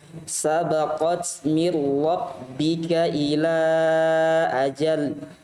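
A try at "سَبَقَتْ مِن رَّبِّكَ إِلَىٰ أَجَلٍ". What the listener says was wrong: Sabaqat. Dipanjangkan lagi.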